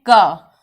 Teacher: जब हम बोलते हैं क, तो उसमें होता है आधा क के साथ अ का योग